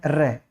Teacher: जैसे ही हम र का उच्चारण करेंगे तो क्या होगा, जीवा जो है ऐसे लग रही है जैसे कंपन कर रही है, इस आधार पर इसका नाम दे दिया गया था प्रकंपित व्यंजन नाम दिया गया था।